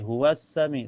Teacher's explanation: Karena alif lam ketemu huruf syamsiyah yaitu sin. Cara bacanya langsung masuk ke sinnya. Jadi alif lamnya tidak terbaca dan cirinya setelah alif lam ada huruf yang bertasyid yaitu sin. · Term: alif lam asyamsiyah